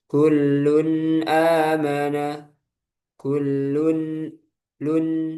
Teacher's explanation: Jadi yang izhar yang di sini tanwin bertemu hamzah kita baca jelas tanwinnya.